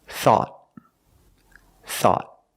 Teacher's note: At the end, the tongue goes up and makes a stop T.